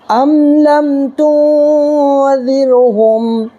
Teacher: تو دیکھیے میم ساکنی کے بعد میم اور با کے علاوہ لام آ رہا ہے، تو یہاں پر ہم میم کو ظاہر کر کے پڑھیں گے، اس کو اظہار شفوی کہتے ہیں